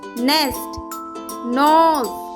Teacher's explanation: The N sound is made when your tongue touches the top of your mouth behind your teeth.